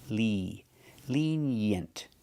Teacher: the first vowel is a long e like green beans